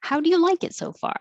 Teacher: the how and the like are important so they'll be higher and longer